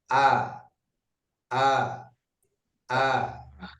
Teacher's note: Hamzah ketika kita mengucapkan kita rasakan keluar dari bagian tenggorokan paling bawah.